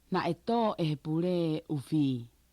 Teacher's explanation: the end of pule and the beginning of e just merged perfectly together